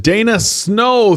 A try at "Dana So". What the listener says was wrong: Snow. Throwing an N in there?